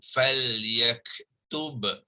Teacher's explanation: ba ni hendaklah dizahirkan, ya, bunyinya, iaitu makhraj dan sifatnya kena zahirkan kerana dia bertemu dengan waw, ya, waw.